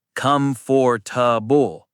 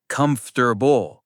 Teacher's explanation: 3 syllables. The middle part disappears.